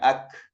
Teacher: sangat tampak dan jelas hamasnya itu ketika disukunkan, ya, ak. Ya, ketika dia berharokat ada juga ka, tapi makhrajnya itu kan lepas dia.